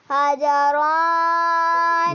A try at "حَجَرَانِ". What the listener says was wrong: ناک میں نہ پڑھو حجرانی جی اب کہیں یا نون لگا کر تثنیہ بنانا ہے ہا زبر ہا جیم